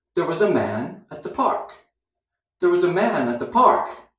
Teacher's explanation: can you hear the slight break between those two groups